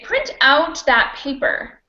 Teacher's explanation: if you wanted to use it as a verb you could you can say print out that paper and the stress would be on out